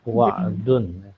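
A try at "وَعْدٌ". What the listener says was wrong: Pakai ain. Wa'dun.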